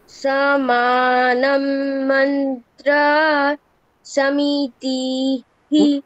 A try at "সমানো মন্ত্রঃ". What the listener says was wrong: সমানম এটা কোথায় আছে? সমানো আছে ওকার, হ্যাঁ আবার। মন্ত্রঃ নয়, মন্ত্রস।